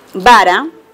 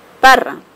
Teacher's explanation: el fonema bilabial sonoro y el fonema bilabial sordo